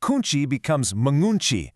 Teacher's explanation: The language prioritizes phonetic flow, forcing the hard consonant to dissolve right into a nasal sound.